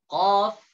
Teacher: Pangkal lidah bertemu dengan daging lunak setelah tenggorokan.